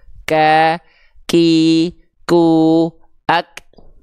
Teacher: Kalau dia mengalir nafas, si hamsnya itu bersandingan dengan sifat yang namanya rokhwah. Kalau hamsnya bersandingan dengan sifat syiddah, maka dia hanya berupa percikan nafas saja, karena dia tertahan suara gitu